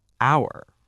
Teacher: the H is silent. It sounds like hour, so it sounds like a vowel sound